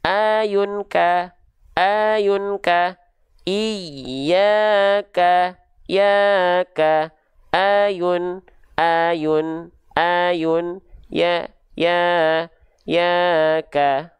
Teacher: Karena sedikit-sedikit kita akan mendapati hukum tajwid mad tabi'i, maka pastikan kadar dua harokatnya ajib, tepat di dua harokat, tidak kepanjangan, kelamaan, tidak kependekan, kecepatan